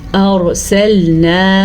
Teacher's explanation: را کو پر پڑھنا ہے کیونکہ را ساکن ہے اور را سے پیچھے والے حرف کے اوپر زبر ہے۔